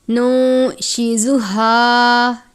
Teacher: یہ گول والی ہا ہے، حلق کے آخر یا سینے کے بیچ سے پڑھتے ہیں، اس ہا کو باریک نہیں پڑھتے